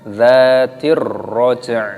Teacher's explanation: Dzatir, alif lam syamsiyah. Di sini hamzah wasolnya tidak terbaca, langsung diidghamkan.